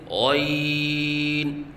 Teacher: غین کو ادنی حلق سے ادا کریں اور پر کر کے پڑھیں، کیونکہ یہ حروف مستعلیہ میں سے ہے اور حروف مستعلیہ کو پر پڑھا جاتا ہے، لہذا غین کو پر کر کے پڑھیں اور 3 الف کے برابر لمبا کر کے پڑھیں، جیسے غین۔